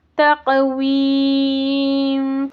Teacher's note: تق یہاں پر خلخلہ ہوگا، قاف قا با جیم دال، ان پر جب ساکن آ جائے تو خلخلہ ہوگا۔